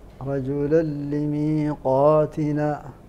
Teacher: تن وقع بعده حرف اللام وحكمه الادغام بغير غنه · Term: الإدغام بغير غنة